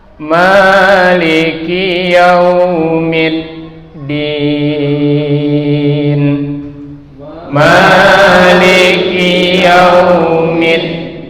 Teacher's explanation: Ma-nya kita baca 2 ketukan, yaunya jangan dipanjangkan suaranya